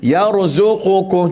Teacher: pastikan di sini ra tu mati, jangan melantun. Kul kita baca yarzuqukum, ada orang jenis suka melantun ni.